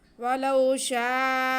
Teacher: مد متصل یعنی کہ جڑے ہوئے الف مدہ اور حمزہ، تو مد متصل ہے یہ، اسے ہم 4 الف کے برابر ادا کریں گے، اوپر نشان بنا ہوا ہے۔